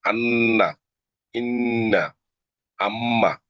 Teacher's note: নাকের পাশে হতে গুন্নাহ উচ্চারিত হয়, যেমন আন্না, ইন্না, আম্মা, গুন্না করে পড়তে হবে, আন্না, ইন্না, আম্মা।